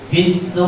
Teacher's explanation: su'i dibaca Panjang 3 alif atau 6 harakat dinamakan mad wajib mutasil sebab mad bertemu hamzah dalam satu kalimat.